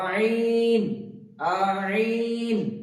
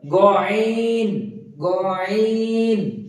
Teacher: গইন ঠিক একইভাবে গইনটা উচ্চারণ হবে গইনটা হালকা কন্থন উপর দিকে আইনটা উচ্চারণ হচ্ছে কন্ঠনালীর মাঝ থেকে এবং গইনটা উচ্চারণ হবে কন্ঠনালীর উপর থেকে